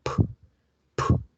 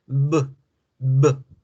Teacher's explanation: Con la P y con la B, el aire pasa por la boca después de crear la aplosión. Yo digo p, p, y boto el aire. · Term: consonantes bilabiales